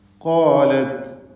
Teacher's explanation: ഖാഫും അതിൻ്റെ ദീർഘാക്ഷരമായ അലിഫും തഫ്ഖീം ചെയ്യണം, സ്വരഭാരത്തോടെ ഉച്ചരിക്കണം.